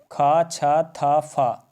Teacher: महाप्राण यानी कि जिससे मुंह से हवा ज़्यादा निकलता है